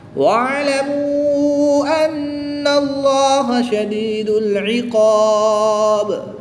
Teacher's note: الف سے پہلے حرف پر زبر ہے تو یہاں پر الف مدہ ہوگا، با کی زیر کو وقف میں ساکن کر دیں گے، اور جب اس کو ساکن کریں گے تو یہاں پر وقف کی حالت میں مد عارض ہوگی، 2 سے 3 الف تک کھینچ کر پڑھیں گے۔ · واو مدہ کے بعد حمزہ دوسرے کلمے میں ہے تو یہاں پر مد منفصل ہوگی، 2 سے 3 الف تک کھینچ کر پڑھیں گے۔ نون مشدد میں غنہ کر کے پڑھیں گے۔